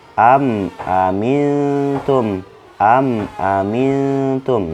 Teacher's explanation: Mim mati bertemu dengan hamzah ini ya. Am itu kan dibaca jelas ya, teman-teman. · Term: izhar syafawiyah